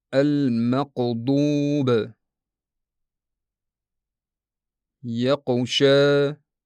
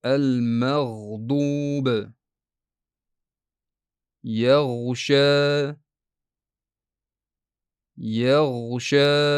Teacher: Holbuki g'oyin bu silliq, uzluksiz va davom etuvchi tovush boʻlishi kerak.